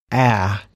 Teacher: should focus on the correct position of your lips and tongue open your mouth a little relax your lips and put them in a neutral position place your tongue in the middle of your mouth not too high or too low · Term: UH sound